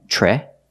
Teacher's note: the first vowel is the short e like in bed and ten